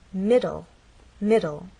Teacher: This word has two syllables, middle, and the stress is actually on the first part. It ends in an E, but the final sound is an L sound because the E is silent.